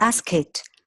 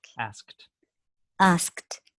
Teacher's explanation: with the K sound, we don't want to add any extra syllable, just a T.